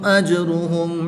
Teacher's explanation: جیم ساکن ہے تو یہ حروف قلقلہ میں سے ہے تو جب حروف قلقلہ ساکن ہو تو ان میں قلقلہ خوب ظاہر ہوگا